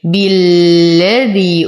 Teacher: وتم كسرة الباء. نشد اللام، نعطي المد الطبيعي حقه